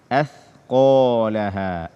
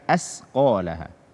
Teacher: tidak membaca huruf tha dengan benar atau menggantinya dengan sin